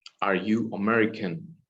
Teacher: the intonation increase in the word american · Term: rising